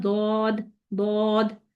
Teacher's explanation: और जो दौद है ये कहाँ से हो रहा है, जैसे कल मैंने आपको बताया था कि ये हाफा से हो रहा है। दौद जो है जबान की करवट यानी मोटे किनारे से, ठीक, वहां से अदा हो रहा है